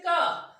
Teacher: क आपके कंठ से निकल रहा है, कंठ पे आपको जोर देना पड़ रहा है। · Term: स्पर्श व्यंजन